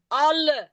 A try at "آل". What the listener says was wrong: ال نہیں، آل کھڑا زبر بھی ہے، مد بھی ہے، تو کھینچنا ہے اس کو. अल नहीं, आल आल, बात सुने, आल पढ़ा है हमने ना।